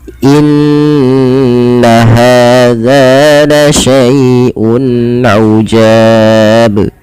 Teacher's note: Maka huruf yang sebelum hukum maaf sebelum huruf madnya adalah dia memanjangkan, yaitu huruf ja. Ja dipanjangkan di sini kita boleh memilih dua harakat, boleh empat harakat, dan boleh pula enam harakat. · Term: mad arid di sukun, mad arid disukun